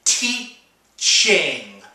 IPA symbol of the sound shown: tʃ